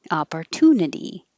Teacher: Looks like an O, but it sounds like ah.